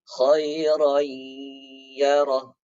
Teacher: Lalu di sini tanwin tidak sejajar bertemu dengan huruf ya. Ya, cara bacanya tanwin tidak sejajar maka didengungkan